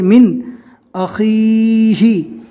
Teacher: یہاں پر نون کو بالکل ظاہر اور صاف اور کلین پڑھا گیا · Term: اظہار